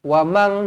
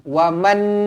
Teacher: nun kosong bertemu dengan huruf kaf, bila kita baca ni ejaan dia seolah-olahnya jadi macam M A N G. Wamang nampak kan macam kita sebut wamang kan, mang M A N G. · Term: ikhfa